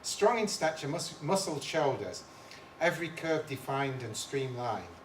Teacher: muscle shoulders every curve defined and streamlined that part is tetrameter four pairs of syllables per line with the stress on the first syllable in each pair